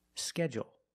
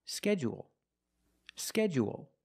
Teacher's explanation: let's talk about this word because it has two different pronunciations some people stress the first syllable only and some people stress both syllables if you stress both syllables you say schedule schedule and you